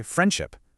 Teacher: The D sound vanishes, just to make the word flow a little better. It's a ghost letter.